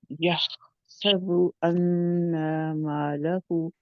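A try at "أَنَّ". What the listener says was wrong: कर रहे हैं अन्ना, ना कैसे हो गया? अन, अन पहले कहें अन, फिर ना, ना, अन, ना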